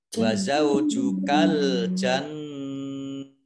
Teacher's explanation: nun tasdid bacaan gunnah ya dibaca mendengung ditahan 2 harokat